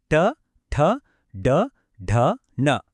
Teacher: క అన్నప్పుడు చ అన్నప్పుడు నాలుక పొజిషన్ ఎంత పర్ఫెక్ట్ గా మారిందో చూశారా అదే ఈ సిస్టం లో ఉన్న బ్యూటీ ఓకే మన జర్నీలో థర్డ్ స్టాప్ మూర్ధన్యం ఈ సౌండ్స్ పలకాలంటే మన నాలికని వెనక్కి మడిచి నోటి పై భాగంలో ఉన్న గట్టి ప్లేస్ ని టచ్ చేయాలి. ఈ ప్లేస్ నుంచి వచ్చేవే ట వర్గం అక్షరాలు ట ఠ డ ఢ ణ వీటిని పలకడానికి కొంచెం ఎఫర్ట్ కావాలి.